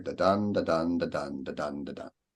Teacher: I guess it's iambic pentameter, but it's got the pairs of syllables, and then there's 5 of them